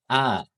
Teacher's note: untuk hamzah ini makrojnya itu adalah di pangkal tenggorokan teman-teman, atau di bagian bawah tenggorokan. A ya, jadi di bawah tenggorokan sini.